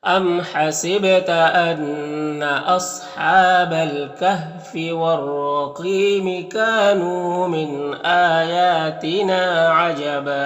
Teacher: काफ में अलिफ मद्दा, नून में वाव मद्दा है, एक अलिफ के बराबर खींचेंगे। यहाँ पर नून साकिन के बाद हमज़ा है तो नून में इज़हार हकीकी होगा, नून को ज़ाहिर करके जल्द पढ़ेंगे